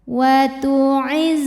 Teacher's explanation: ini ada desis kayak suara lebah jadi jangan tertahan suaranya nya ya harus mengalir seperti huruf z ya ujung lidah kita